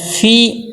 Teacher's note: فا کے نیچے زیر ہے، زیر کو معروف پڑھنا ہے